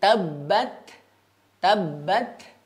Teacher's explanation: Pengucapan ta sukun ya, di sini ada sifat hamas yang keluar. Akan tetapi yang perlu diperhatikan adalah hamas ini secara alami ya, natural.